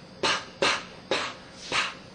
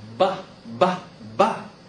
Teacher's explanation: so pa is considered voiceless. Ba is considered voiced. All right, so the difference is in voicing.